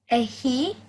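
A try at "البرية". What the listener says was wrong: Almost. So it's a ha sakina, which means it's just a h sound, like a breathing sound. Okay, so you would say al-bariyah. Al-bariyah.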